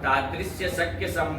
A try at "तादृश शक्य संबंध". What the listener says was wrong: तादृश्य क्या होता है तादृश्य कहाँ लिखा है हाँ तो क्या अंडबंड तादृश्य लगा रखे हो